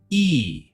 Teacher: Smile widely, show your teeth, stretch your lips to the sides. Make a long E sound. The sound is longer than short E. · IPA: /iː/